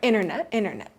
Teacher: that middle T just disappears and inter becomes inner.